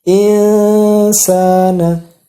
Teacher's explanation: Jadi setengah huruf nun, terus dilanjutkan persiapan ketika mendengung itu bibir sudah membentuk kepada huruf sin. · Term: bacaan ikhfa